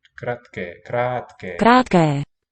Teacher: Ironically, the word short has two long vowels.